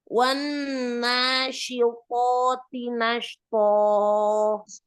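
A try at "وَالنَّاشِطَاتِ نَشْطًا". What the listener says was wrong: Pelan-pelan ya, alirkan dulu sukun sukun shinnya. Wanasyitati nashta. Pelan-pelan saja, alirkan sukun shin. Nashta gitu ya. Jangan terburu-buru.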